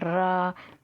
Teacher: रा का उच्चारण करते समय जीवा में कंपन होता है जब आप र का उच्चारण बोलेंगे र तो क्या बोलेंगे एकदम